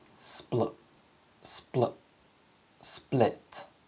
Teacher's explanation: happening my lips start to close in anticipation of the sound as soon as my lips close and air pressure starts to build up my tongue touches the ridge of my mouth so that when my lips part and the air is released the la sound follows